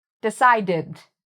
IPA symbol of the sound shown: ɪd